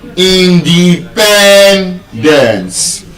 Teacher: It's a polysyllabic word and because of the penultimate stress rule, instead of being stressed on just any syllable, it is stressed on the second to the last syllable.